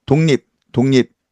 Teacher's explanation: 기역과 리을 만나니까 이응과 니은 나옵니다. 기역과 리을을 이응과 니은으로 바꿔내는 폭립, 이 독립 현상이죠.